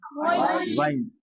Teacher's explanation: और गैन का मखरज मैंने आपको बताया कि मुंह को वो हलक का वो हिस्सा जो मुंह की तरफ हो। हलक का वो हिस्सा जो मुंह की तरफ है यानी अदना हलक।